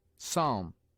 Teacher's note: P is sometimes mute, as in psalm